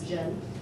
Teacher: Y más otro consonante forman una sílaba. Y esta sílaba, diferente de inglés o castellano, es más tono. No es como acento, no, es tono. Esto es segundo tono.